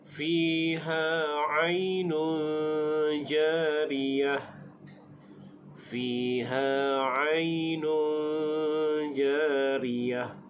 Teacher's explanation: nun dhamatain bertemu dengan jim, hukumnya ikhfa haqiqi, dibaca dengan dengung.